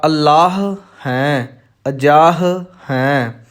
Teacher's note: ਪਹਿਲੇ ਸ਼ਬਦ ਦਾ ਆਖਰੀ ਅੱਖਰ ਹਾਹਾ ਹੈ ਅਤੇ ਅੱਗੇ ਫੇਰ ਹਾਹਾ ਹੈ, ਇਸ ਲਈ ਦੋਨਾਂ ਨੂੰ ਸ਼ੁੱਧ ਬੋਲਣ ਵਾਸਤੇ ਦੋਨਾਂ ਵਿੱਚ ਥੋੜ੍ਹੀ ਜਿਹੀ ਸਪੇਸ ਸਾਨੂੰ ਦੇਣੀ ਪਵੇਗੀ, ਥੋੜ੍ਹਾ ਰੁਕਣਾ ਪਵੇਗਾ ਹਲਕਾ ਜਿਹਾ